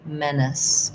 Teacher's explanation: so first syllable stress in menace, it's actually similar to the word men.